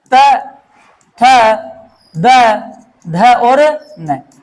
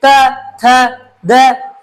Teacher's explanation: त बोलेंगे तो क्या लगेगा? हमारे दांत, ये हमारी जीभ किससे टकरा रही है? दांतों से। त, थ, द टकरा रही है ना। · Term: दंत्य वर्ण